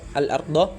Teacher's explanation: ar-ra'ul mufakhamah, yaitu ra yang dibaca tebal , yaitu apabila ada huruf yang berharokat fathah bertemu dan ra